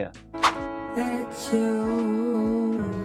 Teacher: Entre la palabra that y la palabra you se está creando este sonido de CH, que suele ocurrir cuando tenemos una palabra que termina con T y la siguiente inicia con Y.